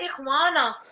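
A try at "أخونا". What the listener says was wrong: That is अख़वान, this is अखूना. उसमें अलिफ होता है वाव के बाद, इसमें वाव के बाद अलिफ नहीं है, नून है. फर्क है, there is a difference in spelling.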